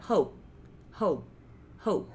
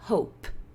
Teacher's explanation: Que isso é uma característica do P. A gente pode não soltar o ar do P